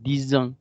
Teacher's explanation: Porque 10 tiene ese sonido de S, pero cuando la palabra que le sigue empieza por vocal, hacemos el sonido avispa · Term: liaison